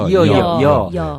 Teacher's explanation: 여는 어와 같으나 이에서 일어난다. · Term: 이중모음